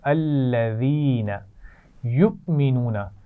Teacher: میں نے جھٹکے کے ساتھ پڑھا ہے، واو کے اوپر حمزہ ہے اور حمزہ کے اوپر جزم ہے. اس حمزہ کو ہم کہتے ہیں حمزہ ساکن، آپ پہلے سیکھ چکے ہیں.